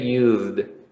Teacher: you will say used, okay, with D, because you have a Z sound and not an S.